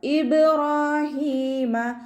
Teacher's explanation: റ ഫത്തഹ് ആയതുകൊണ്ട് നമ്മൾ ഉയർത്തി ഉച്ചരിച്ചു കൊടുക്കുക